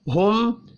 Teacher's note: میم ساکن کے بعد یا ہے, اظہار شفی ہوگا, یہاں پر بھی غنہ نہیں ہوگا